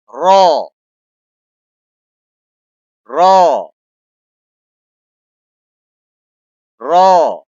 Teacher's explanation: زبان کو دانتوں کے پیچھے اور موٹا کرنا ہے. پیچھے رکھ کے موٹا کرنا ہے.